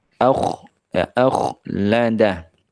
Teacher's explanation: dibaca tebal sehingga diucapkan dengan menjauhnya rahang ya dan menyempitnya bibir menyempitnya pintu dari mulut ya ak ya akada rahnya dijauhkan Sehingga ee menciptakan rongga mulut